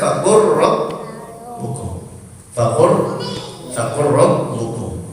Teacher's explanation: Contoh lagi, faqul rabbukum, faqul rabbukum, maka dibaca faqur rabbukum, faqur rabbukum. Hukumnya idgham karena bertemu huruf ro